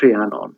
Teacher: the H sound actually comes before the R